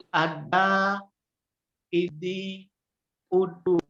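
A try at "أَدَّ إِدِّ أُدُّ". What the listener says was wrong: tasdidnya belum kelihatan. Jadi bunyinya da ya.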